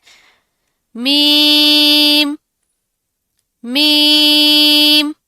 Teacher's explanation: Next word is मीम, मीम। दोनों होंठों के खुश्क हिस्सों के मिलने से मीम अदा होगा। मीम की अदायगी के वक्त नाक में हल्का सा नेजल साउंड आएगा, बिल्कुल लाइट सा नेजल साउंड, ठीक है।